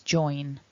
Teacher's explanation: we want a vibration up in the nose